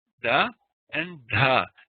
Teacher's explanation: the tongue is against that alveolar Ridge behind the top of the front row of top teeth